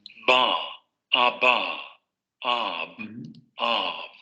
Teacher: Vibración de cuerdas vocales, bloqueo de la salida de aire en los dos labios y luego momento explosivo de liberación de aire. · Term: Bilabial oclusiva sonora